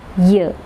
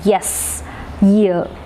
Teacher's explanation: You can feel that you are touching your hard palate using the front part of the tongue, and then you produce the sound ear. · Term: palatal sound